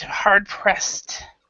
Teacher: remember the past tense ed. So you are hard pressed. So this is actually like a T sound. And we do not have the E is not pronounced.